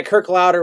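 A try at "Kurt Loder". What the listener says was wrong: Not Kirk, it's Kurt.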